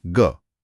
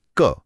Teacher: ग बोलते हुए गले में एक वाइब्रेशन, एक कंपन महसूस हो रहा है। लेकिन क बोलते हुए नहीं। बस यही है वर्णों के वर्गीकरण का पहला आधार जिसे कहते हैं घोषत्व।